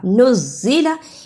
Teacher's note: اسے نزیلہ نہیں پڑھنا، شد کو ادا لازم کرنا ہے۔